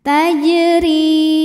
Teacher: Qalqalah Sugra karena Jim sukunnya asli dan ada di tengah bacaan dibaca dipantulkan dengan pantulan yang kecil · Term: qalqalah sughra